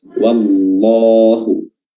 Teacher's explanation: Allah lafzul jalalah di sini dibaca tafkhim, dibaca tebal, ya, karena sebelumnya berharokat fathah